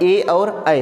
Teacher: कंठ तालव्य ना जो ए और ऐ है वह कंठ और ताल दोनों से मिला है।